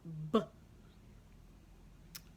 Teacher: those are both made with the lips they're labial consonants